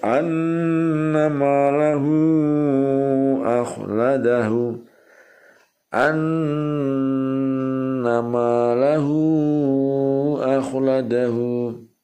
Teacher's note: mad silah tawilah ialah mad silah bertemu huruf hamzah bentuknya alif, panjangnya 2,5 alif.